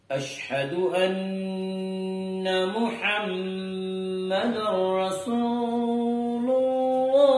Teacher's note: نون مشدد ہے غنہ ہوگا اور محمد کی میم مشدد ہے غنہ ہوگا